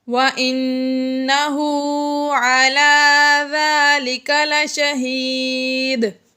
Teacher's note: نون مشدد ہے، اس لیے یہاں پر ہم نے غنہ کیا